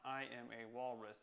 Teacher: I hear the stress on I am a walrus I hear I hear one stressed followed by two unstressed and then stress on walrus